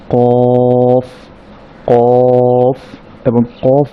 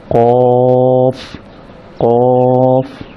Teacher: মূল যে উচ্চারণের স্থান সেটা হচ্ছে জিহ্বার একেবারে গোড়ার সাইডটা উপরের নরম তালুর সাথে লেগে একেবারে শেষ দিকের শেষ অংশের সাথে লেগে উচ্চারিত হবে কফ।